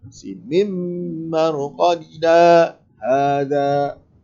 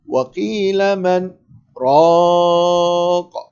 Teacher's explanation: Kita berhenti sekadar 2 harakat tanpa memutuskan nafas. Sambung dengan nafas yang sama. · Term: saktah